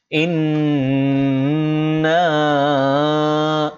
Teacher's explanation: নুনে তাসদিদ হয়েছে, গুণনা করতে হবে।